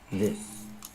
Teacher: this has the short I like this is, and the S sound like star or start.